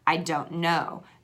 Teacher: so that n influences that T on the end of don't and we kind of take that out and almost just do a flap with our tongue